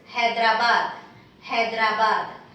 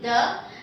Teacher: when you say Hyderabad, we are using the dental D, the, and it is ba, and again dental D, the, Hyderabad.